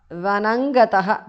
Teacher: Vanam gatah Vanangatah because of sandhi. Anuswara changes to nga there.